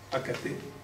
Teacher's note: ils conservent le son d'origine latin, le K, non, accater, hein, à la place d'être palatalisé comme le français, qui passe à acheter, donc qui a transformé le que en che, qu'on retrouve dans le chat aussi, on va le voir après.